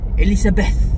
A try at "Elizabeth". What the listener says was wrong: It's Z, not S. Elizabeth.